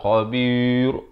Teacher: ra itu mati dengan nipis. Dia tak mati dengan tebal.